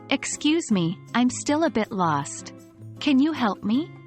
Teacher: use falling intonation at the end